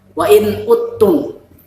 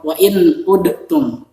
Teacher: Jadi tulisannya uttum, tapi dalam ucapannya, dalam bacaannya itu wa in uttum. Jadi huruf dal ini dimasukkan ke huruf ta. Dal disukun dan tanya yang ditasydidkan. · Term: idgham mutajanisin